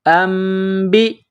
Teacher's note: یہ ہم بتلا چکے ہیں کہ نون ساکن کے بعد جہاں بھی با آ جائے تو وہاں نون ساکن کے ساتھ چھوٹی سی میم لکھی ہوئی ہوتی ہے، جیسے یہاں پر یہ چھوٹی سی میم ہے، تو ہم حمزہ کو میم کے ساتھ پلس کریں گے، نون ساکن کو نہیں پڑھیں گے، اور یہاں آواز ناک میں چھپائیں گے، غنہ کریں گے